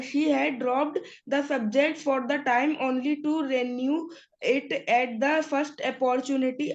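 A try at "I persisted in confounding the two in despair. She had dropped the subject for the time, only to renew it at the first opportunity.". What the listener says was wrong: you are reading very nicely, beta, but just give a little pause at the full stops, okay?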